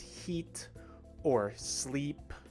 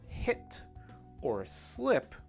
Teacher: the e sound takes place very much near the top of the mouth and also near the front